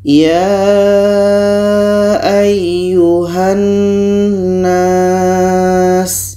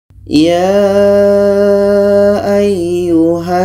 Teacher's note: Huruf Ha ini pada akhirnya dibaca pendek karena terhubung dengan huruf yang memiliki tashdid.